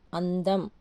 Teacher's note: అం అం లాగా పలుకుతుంది అన్ లాగా కూడా పలుకుతుంది రెండు రకాలుగా పలుకుతుంది ఇది గమనించండి అందం అన్నప్పుడు అన్ దం అన్నప్పుడు మ లాగా చూడండి సున్నా